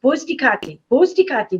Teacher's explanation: the Germans couldn't make the TH sound for Kathy